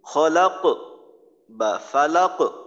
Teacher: কলকলাটা যখন করবেন তখন যেন আওয়াজের সাথে বাতাস বের না হয়। কলকলার আওয়াজ দুইবার হবে আওয়াজটা।